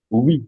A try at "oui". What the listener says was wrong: Yeah, good.